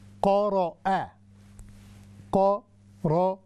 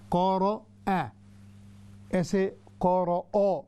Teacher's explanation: تو دیکھیے قاف ہیوی ہے، اس کے بعد را بھی ہیوی ہے، اور آخر میں حمزہ جو ہے الف ہے وہ باریک ہے۔